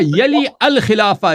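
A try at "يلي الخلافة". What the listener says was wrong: یلی ال نہیں، یلیل پڑھا جائے گا، قاعدہ چلتا ہے یہاں ادغام کا. یلیل بولے،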